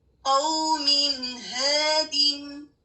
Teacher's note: قوم ہادن, قوم, اینڈ پر نون کی آواز واضح کریں اور اس کے بعد ہادن اس کو کریں, یعنی نون کا پورا حق ادا کریں, اس کو چھپائے نہیں, اس پر غنہ نہ کریں, پراپرلی اس کو ادا کریں, تو یہ اظہار ہوگا.